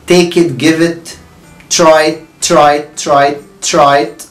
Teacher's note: اي حاجة بعديها كلمة it الزقها فيها. يعني بقول take it give it try it try it try it try it. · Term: اللينكينج